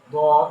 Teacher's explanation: জিহ্বার গোড়ার কিনারা উপরের মাড়ির দাঁতের গোড়ার সাথে লাগাইয়া একটি হরফ, সে হলো দত